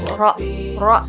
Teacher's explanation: Nah, ro ini jadi si lidahnya tuh ke atas, ke bagian langit-langit, ro gitu.